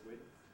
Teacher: with starting voiced but then going voiceless, width, although some people assimilate it and make the whole thing voiceless, width.